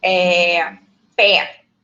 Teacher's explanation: representam as vogais tónicas com timbre aberto